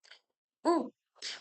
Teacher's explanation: буква у вона трішечки глухіша більш слабша ніж в українській мові